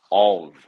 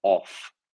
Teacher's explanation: So of, it's got that v sound instead of the f sound.